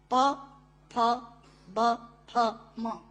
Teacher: प, फ, ब, फ, म दोनों होंठ मिलाकर बोले जा सकते हैं। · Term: ओष्ठांग